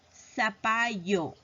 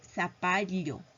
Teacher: El yeísmo es un modo de pronunciación característico de varias regiones que consiste en pronunciar la elle del mismo modo que la ye